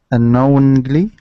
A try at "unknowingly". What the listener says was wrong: There you go. Yeah, unknowingly.